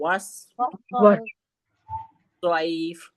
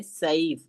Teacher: سواد کو ہم موٹا پڑھیں گے, سین کو ہم باریک پڑھیں گے. اگر سیف بولا ہم نے, سیف مخرج دونوں کے سیم ہے, لیکن ہم نے سیف بولا تو سین کی ادائیگی ہوئی.